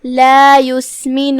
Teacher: ہم نون کو پیش سے ادا کرتے ہیں، اپنی آواز لمبی نہیں کریں گے تاکہ مد واو نہ ظاہر ہو